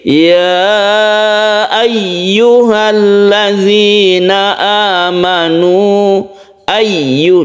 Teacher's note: ayyuha disini ada Mad Jaiz munfasil ya nya ini kita panjangkan yang perlu kita perhatikan di sini yaitu ada tasydid ya yang harus kita tekan ketika membacanya · penekanan dari ya ini karena dia itu bertasydid, jangan sampai tasydidnya itu hilang